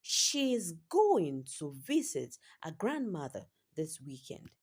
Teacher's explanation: The important words going, visit, grandmother, weekend get stressed. While the smallest word smaller words such as she's to, she is to, her, this are said slightly and quickly. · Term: natural rhythm